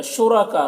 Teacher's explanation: را کو پر پڑھیں گے اور کا میں جو مد ہے یہ مد متصل سے 3-4 الف کے برابر کھینچ کر پڑھیں گے